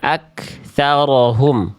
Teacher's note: Nah, jadi Bunda baca begini, ak. Harusnya cukup percikan nafas saja · Kaf tidak boleh memantul karena kaf tidak punya sifat qalqalah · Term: kaf sukun